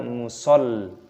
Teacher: Lamnya berharokat tasdid maka dimasukkan, ditekan, dibaca musallin. Panjangkan lamnya, ada ya sukunya mad tabi'i, cukup dipanjangkan 2 ketukan.